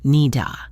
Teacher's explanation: The D at the end of need links with the A, which sounds like in this unstressed position.